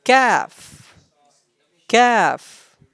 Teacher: The sound of calf pronounced from the root of the tongue and the hard palate.